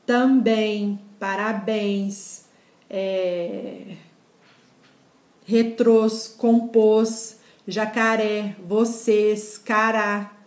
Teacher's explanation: Palavras que a tonicidade cai em cima da última sílaba, ou seja, oxítonas, e desde que terminadas em, ens, os, es, a e as.